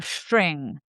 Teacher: a slightly backer tongue when you pronounce an S sound turns out as sh. So, it's really just being efficient in positioning our tongue.